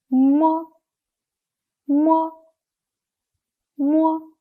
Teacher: nasal sound when we pronounce it the leaves form a closure the Air Stream passes through the nasal cavity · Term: unaspirated bilabial nasal sound